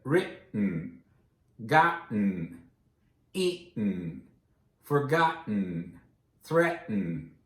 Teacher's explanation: No T's pronounced. No real T's. Just that glottal stop.